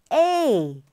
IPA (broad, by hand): eɪ